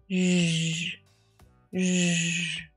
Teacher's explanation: Shh, you can feel that air coming out. But zh is made with your vocal cords back here. Less air, more vocal cords and vibration. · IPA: /ʒ/